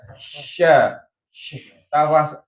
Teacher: Tafasyi itu artinya menyebarnya angin di rongga mulut ya, mengenai gigi-gigi semuanya. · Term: sifat tafasyi